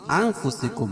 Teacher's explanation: قاعدہ ہے کہ حروف مدہ کے بعد حمزہ دوسرے کلمے میں ہو تو مد منفصل ہوتا ہے، اس میں توسط اور قصر ہے، یعنی 1 الف سے لے کر 2.5 الف تک اس کو کھینچ کے پڑھ سکتے ہیں۔ ان میں اخفا حقیقی کیونکہ نون ساکن کے بعد حروف اخفا کے 15 حرفوں میں سے فا ہے۔